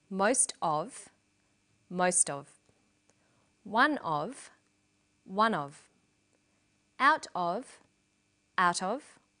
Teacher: Notice that of in these phrases is unstressed.